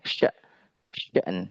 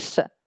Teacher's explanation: syin ini sifatnya dia tafasy dia memiliki sifat yang istimewa yaitu tafasyi ya yang tidak dimiliki oleh yang lain ya. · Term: huruf syin